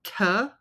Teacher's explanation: would be aspirated T aspirated like I said it means that there is a puff of air coming out right after pronouncing the letter so T so there is a lot of air coming out